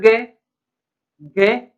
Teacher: प्रत्येक वर्ग का जो तीसरा चौथा और पांचवा वर्ण है उनका उच्चारण करने पर नाद या गूंज अधिक होती है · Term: सघोष